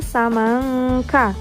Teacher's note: ada nun sukun bertemu dengan huruf k, maka suara nun sukun juga samar-samar antara huruf nun dan huruf K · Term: ikhfa